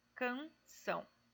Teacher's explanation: São é acentuada, é uma sílaba tônica, então vou terminar de contar nessa sílaba são.